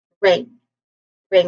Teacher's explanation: There's a nasal sound here. The ng sound here and a short e vowel sound.